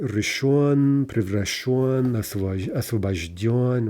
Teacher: all of these short form PPPs from yonly forms are end stressed